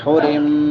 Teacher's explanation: حرم میم مشدد آ گئی ہے، یہاں پہ غنہ ہوگا